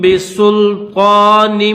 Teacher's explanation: طا کے اوپر کھڑا زبر بھی ہے تو اس کو ایک الف کی لمٹ میں کھینچیں گے، اور نون کے نیچے دو زیر ہے، نون کو میم کے ساتھ ملائیں گے۔